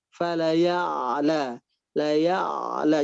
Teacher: Di ainnya pastikan tidak putus suaranya ya, tapi masih terdengar. Dalam istilahnya itu mengalir.